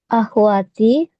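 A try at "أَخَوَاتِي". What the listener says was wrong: Oh, ini ini khnya fathah, Bu. Akho gitu.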